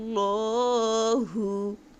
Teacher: শিনের মাখরাজ হলো জিহ্বার মধ্যখান উপরে তালুর সঙ্গে লাগাইয়া। যখন আপনি শিনের সঙ্গে গুণনা করবেন তখন আপনার জিহ্বার মধ্যখান উপরে তালুর সঙ্গে মিলাই রাখতে হবে, আর নাকের বাঁশির ভিতরে গুণনার আওয়াজ জারি করতে হবে।